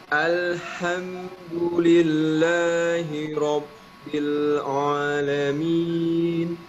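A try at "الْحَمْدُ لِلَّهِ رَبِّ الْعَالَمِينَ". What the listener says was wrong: Nah, kemudian tadi ain, bukan bukan alamin. Ya, tipis ya, tidak ditebakan. Alhamdulillahi rabbil alamin. Bukan tipis ya. Alamin, dan tidak ada suara gunnah di ain ini ya.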